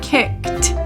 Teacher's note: The 1-syllable word kicked ends with the t sound.